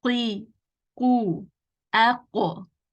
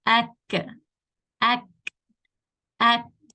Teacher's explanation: Qaf touches the soft part of the upper palate and kaf is going to touch the hard part.